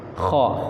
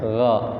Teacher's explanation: kha sama gha itu tempatnya sama, cuma sifatnya beda. Kha kotor, kalau gha itu bersih ya.